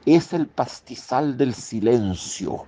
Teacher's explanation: suena lindo por el uso de las sibilantes abiertas, fricativas.